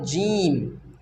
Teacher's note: जीम का मखरज है कि ज़ुबान का बीच का हिस्सा जब ऊपर के तालु से लगे जीम अदा होता है।